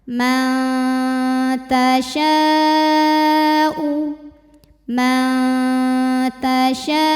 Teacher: dalam satu kata Man tasyaau ini u bukan u hati-hati ya ini Hamzah dari tenggorokan paling bawah